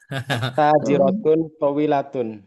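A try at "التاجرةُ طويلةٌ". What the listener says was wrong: Nah, alif lam tidak boleh berkumpul dengan tanwin At-tajirotu. Yang pertama tadi at-tajirotun. Alif lam sama tanwin musuhan.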